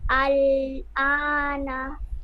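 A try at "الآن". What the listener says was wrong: টান দেন, আনা। টান দেন, আল আনা শেষেরটা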